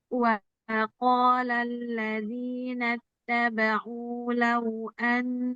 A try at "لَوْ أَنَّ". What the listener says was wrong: Lebih tipis lau. Kuatkan, jangan wa qala alladzina nattaba'u enggak tasdid.